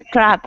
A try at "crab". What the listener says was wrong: take some crabs with a B, not not with a P.